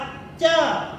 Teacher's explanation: जीभ जो है तालु को स्पर्श कर रही है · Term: स्पर्श व्यंजन